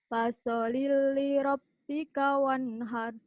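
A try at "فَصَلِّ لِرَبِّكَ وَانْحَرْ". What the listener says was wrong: Bukan. Bukan fasoli. Kan L-nya 2. Fasolli li rabbika wanhar. Coba lagi.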